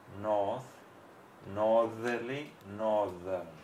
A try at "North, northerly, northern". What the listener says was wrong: Okay, you've got those.